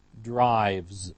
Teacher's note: the base form ends with the sound v, which is voiced. So we have a voiced ending, z, drives.